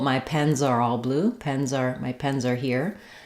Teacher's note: you'll hear that that Z links and connects together · But if I'm linking, for example, my pens are all blue, my pens are here, you'll hear that Z links and connects together. The only thing I want to avoid is a strong S.